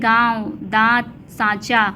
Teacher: अनुनासिक का उच्चारण नाक और मुंह से होता है और उच्चारण में लघुता होती है